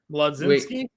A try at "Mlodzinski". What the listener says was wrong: Nope. No L. L is silent. Maginski. Maginski. Actually, Majinski. Gin. Gin. Maginski.